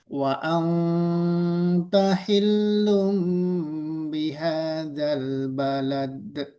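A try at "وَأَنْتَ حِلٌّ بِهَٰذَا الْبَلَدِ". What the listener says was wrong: Balad langsung enggak usah balad enggak usah ditahan.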